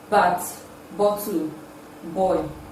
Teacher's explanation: the sound is produced with the two lips therefore it is voiced